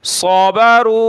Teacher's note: صاد کو موٹا کیا اور را کو واو کی طرف کھینچیں گے